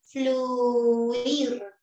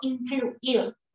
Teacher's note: RAE al respecto dice que ocurre un ligero ocurre un [Música] ligero alargamiento fonético de la primera vocal cerrada